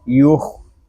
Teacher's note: خوا یہ حروف مستعلیہ میں سے ہے، اس کو پر پڑھیں گے